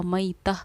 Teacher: गोल ता पर वक़्फ़ करते हैं तो वो हाय साकिना हा बन जाती है